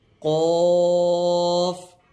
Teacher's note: اس کو ہمیشہ ہر حالت میں پر یعنی موٹا پڑھیں گے